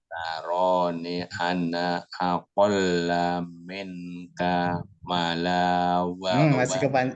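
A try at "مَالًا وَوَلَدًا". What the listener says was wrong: Masih kependekan. Malau, manya panjang, Pak.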